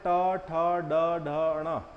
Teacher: ढ ण इसको मूर्धन्य इसमें जो है जीभ को मोड़ करके जीभ को मोड़ना होता है मूर्धा पर टच करना होता है